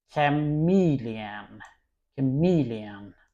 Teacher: the stress is on the second part and ch sounds chameleon.